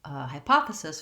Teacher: in hypothesis we have second syllable stress